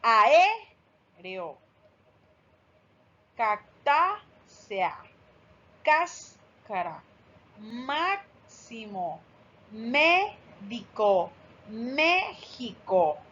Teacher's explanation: Las palabras esdrújulas, la sílaba tónica, o sea, la más fuerte, es la antepenúltima.